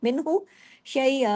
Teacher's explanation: من نون ساکن کے بعد ہا ہے نا، من پورا اظہار کیا ہم نے، کوئی ناک میں نہیں لے گا، من یہ اظہار ہلکی ہو رہا ہے، چھوٹا سا ورڈ ہے لیکن اس میں بھی دیکھیں اظہار ہلکی ہو رہا ہے.